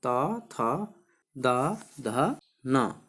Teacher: हमारी जीभ जो है दांतों को स्पर्श करती है, दांतों को छूती है, इसलिए इन्हें क्या कहा जाता है, दंत्य वर्ण कहा जाता है।